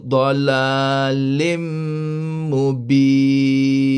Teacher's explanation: Idgham ma'al gunnah, idgham dengan dengung, ya, dibaca dengan dengung sekadar 2 harakat, iaitu dalalim mubin.